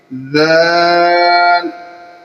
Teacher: جب ادا کریں گے تو زبان کو جو ہے وہ تھوڑا سا جو ہے وہ دانتوں سے باہر نکال کر اس کو پڑھیں گے